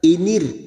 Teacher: Kita uraikan pada kalimat inir, ra sukun yang didahului kasroh, kita baca tarkik atau tipis